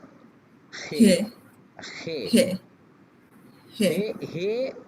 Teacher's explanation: হ এবং খ দুইটার মাঝামাঝি আপনার মুখ থেকে ইয়ারটা বের হয়ে যাবে